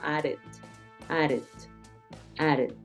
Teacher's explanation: En este caso, como termina en D, added, added. Tiende esa D repetida a ejercer un sonido como de R, ¿no? Added, added, added.